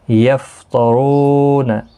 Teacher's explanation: را پیش کی وجہ سے پر پڑھا جائے گا، رو واو مدہ ہے، ایک الف کی مقدار کے برابر کھینچ کر پڑھیں گے